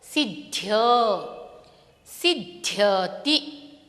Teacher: अत्र द, ध, य, यह तीन वर्ण है, लेकिन शुरू में हम द उच्चारित कर रहे हैं, बाद में ध और अंत में य, और उन तीनों के साथ स्वर है अ।